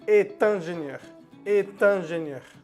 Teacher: Y para no decir mon père est ingénieur, uno pronuncia la T. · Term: liaison